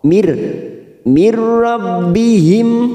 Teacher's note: Ada nun sukun bertemu ro, namanya bacaan idgham bila gunah. nun sukun atau tanwin yang bertemu dengan huruf lam ro, namanya bacaan idgham bila guna, hanya masuk tanpa ditekan, tanpa mendengung, hanya masuk, siap masuk ke huruf ro.